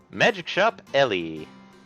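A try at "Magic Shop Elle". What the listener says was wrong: Magic Shop L, not LE.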